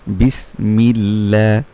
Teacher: আল্লাহ শব্দের লাম যে শব্দের সাথে সংযুক্ত হয়েছে সেটার নিচে জের থাকার কারণে সেই আল্লাহ শব্দের লামটা পাতলা করে পড়বো